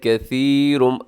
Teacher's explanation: اس میں ثا ہے جس کے اوپر 3 نقطے ہوتے ہیں، اس کے اندر سیٹی نہیں ہوتی، آپ نے سیٹی سے بچانا ہے۔